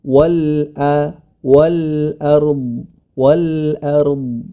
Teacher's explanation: Sebagaimana pada kata ard ini, a tetap menjadi a. Wal ard, huruf dhad tebal, huruf ra pun tebal.